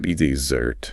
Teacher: if you want that sweet reward dessert, the stress is on the second syllable